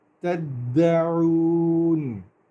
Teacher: دال کے اوپر شد ہے، اس کو ڈبل حرکت کے ساتھ پڑھتے ہیں